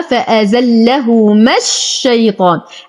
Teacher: أنتقل من فتحة الميم إلى تجديد الشين